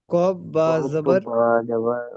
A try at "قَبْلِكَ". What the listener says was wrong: না, কব হচ্ছে না, কব। কব কোনো শব্দ হয় না, কব কোনো অক্ষর হয় না। কফ।